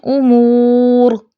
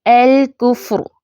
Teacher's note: اس را ساکنہ کو تفخیم کے ساتھ پڑھیں گے